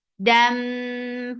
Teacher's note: This because this is idgham, and this idgham has akmal gunna, so keep the sound in your nose for a longer time.